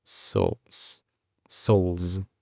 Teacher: Al final es como una Z vibrante.